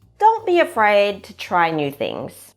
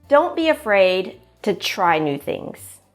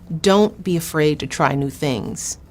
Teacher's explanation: the intonation falls slightly at the end the last syllable of a statement sentence is a bit lower in pitch and a bit quieter